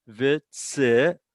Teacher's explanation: It's a vav, and it has its own vowel. Vitzivanu, and it's accented on the vanu.